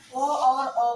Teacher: ओ और औ का उच्चारण कंठोष्ठ से होता है